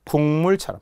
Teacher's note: 이제 설명할 수 있어야 된다는 거야 비음화 대해서 키윽 기역으로 갔다가 기억과 미음이 만나 다시 이응으로 바뀌죠